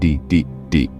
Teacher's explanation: When you say D, it's voiced, meaning your vocal cords vibrate. Try it. Put your hand on your throat and say D, D, D.